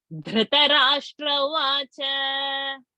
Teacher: It's not Dhru. It is Dha, Mahaprana.